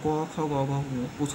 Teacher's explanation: ক খ গ ঘ উথ পাঁচটা হচ্ছে আমার কণ্ঠবর্ণ কারণ এগুলো উচ্চারণ করতে কণ্ঠ লাগে তাই এরা প্রথমটা হচ্ছে ক বর্গ কারণ শুরুতে ক আছে